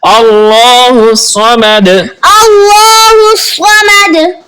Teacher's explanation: صاد حروف مستعلیہ میں سے ہے، تو اس کو پر یعنی موٹا پڑھیں گے